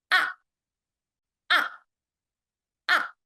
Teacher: it starts high and then immediately goes down to low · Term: fourth tone